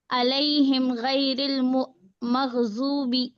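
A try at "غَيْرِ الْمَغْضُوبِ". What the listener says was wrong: غیر ال نہیں بولنا اس کو.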